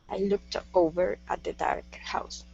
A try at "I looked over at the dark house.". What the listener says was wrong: At the. Give me a good TH sound there. Okay, instead of at the. I looked over at the dark house.